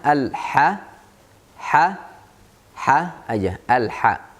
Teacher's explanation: Gak usah dipakai lidah waktu baca huruf ha. Dari tengah tenggorokan aja.